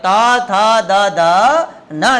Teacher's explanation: તો દાંત ન બોલે તા થા થા એમ ન બોલે સાહેબ. જીભ દાંતને સ્પર્શ કરે